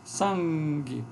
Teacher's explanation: uma nasal que é produzida com a oclusão com a parte posterior da Língua Lá no véu palatina · E depois eu tenho também essa nasal, que ocorre como variante fonética em português, em algumas palavras, por exemplo, como sangue, Então eu tenho aqui uma nasal que é produzida com a oclusão com a parte posterior da língua lá no véu palatino